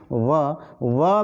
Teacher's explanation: आपका नीचे का होंठ और ऊपर का दांत मतलब आपको एक दूसरे से स्पर्श करता हुआ प्रतीत होता है, लेकिन फिर भी वो उतनी मजबूती के साथ एक दूसरे को स्पर्श नहीं करेगा। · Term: दंतोष्ठ